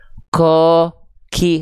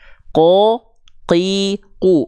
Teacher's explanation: jadi jangan sampai keluar percikan nafas